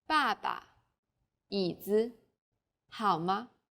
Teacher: there's a neutral tone this is very light weak and short pay attention to the second syllables of the next examples Papa